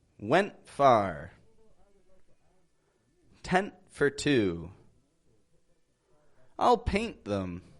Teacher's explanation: when you are ending that word you're making a quick stop on the T your voice is raising up a little bit and uh and